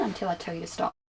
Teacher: did you hear the falling tone at the end